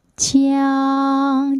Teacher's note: 你会觉得它是一个后鼻韵母，所以它最后这个音是昂，在鼻腔里面